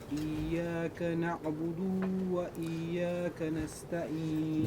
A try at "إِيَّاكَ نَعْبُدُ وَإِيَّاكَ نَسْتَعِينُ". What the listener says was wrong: نعبدو اس کو لمبا نہیں کرنا. نعبد إياك نعبد وإياك نستعين.